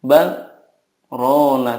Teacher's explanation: dari kata bal ke rona itu harus ada saktahnya